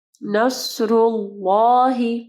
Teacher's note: صاد کو ہیوی پڑھنا ہے، را کے اوپر پیش ہے، را ہیوی پڑھی جائے گی، ٹھیک ہے؟ اللہ کے نام سے پہلے دیکھیں را کے اوپر پیش ہے، تو اللہ کا نام جو ہے ہم لوگ ہیوی پڑھیں گے، یعنی پر پڑھیں گے، ٹھیک ہے؟